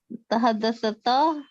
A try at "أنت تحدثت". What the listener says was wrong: Not tahaddathata. The tha has to be silent now. Anta tahaddathta.